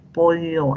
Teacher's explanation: Mientras que en pollo es lateral, el aire sale por el costado de la lengua. A ver, pollo, la lengua se tiene que arquear y el aire sale por los costados.